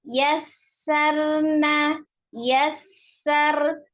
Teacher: ee bertasdid ya tempatkan huruf sinnya sesuai dengan sifatnya yang pertama ada sifat alhamsnya ya mengalir nafas ketika mengucapkan huruf